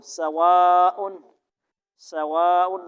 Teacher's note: واو پہ ہونٹ کیا ہوں گے، گول